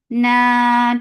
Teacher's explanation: Makkan for fatha upon jaws, attach nun, nun will get sif of gunna. This gunna is akmal, so keep the sound in your nose for a longer time. Na 2 counts long.